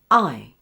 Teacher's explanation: Now for the first sound. I will say ah and join it to I with a glide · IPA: /aɪ/